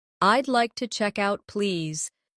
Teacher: Notice the smooth link between check and out.